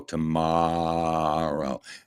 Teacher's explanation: you got to go full long O on the second O